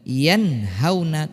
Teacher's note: nun sukun tetap dibaca nun, yanhauna dan tanpa didengungkan. Ini adalah salah satu beberapa contoh izhar halqi.